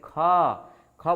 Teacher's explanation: ख बोलने में क्या हुआ हमें श्वास वायु की ज्यादा आवश्यकता पड़ी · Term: महाप्राण